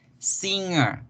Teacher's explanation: La N se nos vuelve más nasal de lo normal. La N se nos vuelve más nasal de lo normal y vean, esa nasalización se caracteriza por este palito que se le pone a la N ahí abajo.